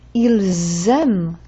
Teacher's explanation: That Z sound tells me it's more than one person who likes chocolate.